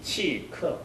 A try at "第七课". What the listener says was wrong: 치가 일성이 안 됐어요. 치, 크. 치를 일성을 완전히 성조를 올려봅시다. 디치크. 크는 약하게 해주십시오. 관은 물론 중요하지만 디치 하면 크가 나올 줄 아니까 약간 약화시켜서 발음합니다. 디치크.